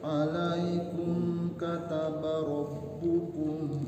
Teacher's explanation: Dari alaikum kumnya enggak nahan ya. Izhar syafawi.